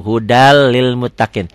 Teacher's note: tanwin ketemu lam idgham bilagunnah Hudan Lil Muttaqin dibacanya jadi hudalil Muttaqin n-nya jadi hilang